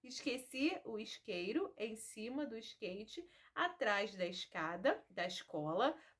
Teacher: na maioria das palavras nós trocamos o e pelo i e também na maioria das palavras vocês podem ouvir também o chiado